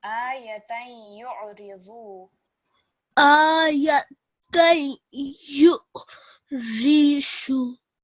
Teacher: on the ayn, we want a slight jerk because of the sukoon.